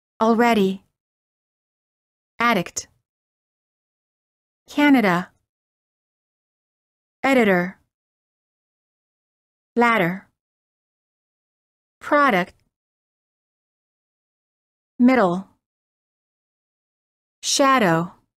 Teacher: fast D between two vowels